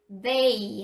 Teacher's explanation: 그래서 떨리는 경우에는 they 하시면 돼요. 약간 앞니 사이에 혀가 나오죠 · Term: 유성음